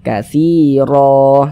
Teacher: Kita baca katsiro, jangan dibaca katsiron, jangan, tapi dibaca katsiro seperti itu. Nah, huruf ro-nya dia dibaca tabkhim, katsiro. Nah, sehingga pangkal lisan kita naik terangkat ke atas ketika kita mengucapkannya. Tebalkan huruf ro-nya, katsiro, seperti itu.